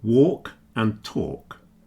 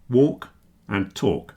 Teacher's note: the silent letter L in words like walk and talk. You can't hear the letter L.